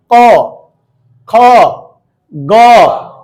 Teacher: উচ্চারণ হচ্ছে না এই যে কণ্ঠ থেকে আমাদের এই জায়গা থেকে কণ্ঠনালীয় থেকে জিহ্ব মূলীয় থেকে উচ্চারণ হচ্ছে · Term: কণ্ঠ ধ্বনি